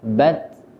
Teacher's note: Contoh bat, tertahan pada suaranya bat, akan tetapi nanti ada nafas yang sedikit agak keluar yang biasa kita sebut dengan sifat hamas